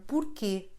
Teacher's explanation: another form of why with a nasal sound at the end